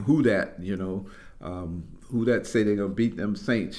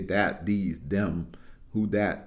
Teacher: it's a transformation because the th sound you know wasn't a part of the language of the Africans who were enslaved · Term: the D sound